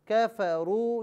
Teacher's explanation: यहाँ वाव मद्दा है इसे एक अलिफ की मिकदार खींच कर पढ़ा जाएगा